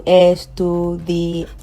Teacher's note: I'm going to put the stress or the pitch on the last but one, which is the an. Okay, so estudiante.